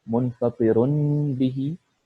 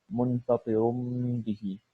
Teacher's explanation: تو یہاں پہ یہ ایکچولی نون کی ساؤنڈ ہے، منفقرن، منفقرن، لیکن کیونکہ با آیا ہے اس کے بعد تو اس لیے ہم نون کی جو آواز ہے ہم اس کو میم میں تبدیل کر دیے